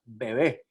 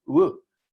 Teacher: se aproxima pero no es no hace cierre completo